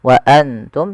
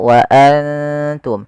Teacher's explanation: itu kita samarkan nunnya kepada huruf ta dan ditahan 2 harakat. Bukan hanya sekedar wa antum, tapi dia wa antum ditahan. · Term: ikhfa